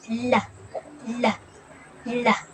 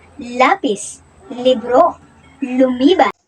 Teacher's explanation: ang L na pabilang sa pagilid na may tinig at ito ay binibigkas na la la la halimbawa lapis libro